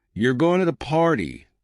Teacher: with a flat tone it's just a statement